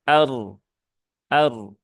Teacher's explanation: diperhatikan di sini ada yang pertama ro sukun ya ro sukun ro sukun yang didahului harakat fathah berarti rnya dia tebal ya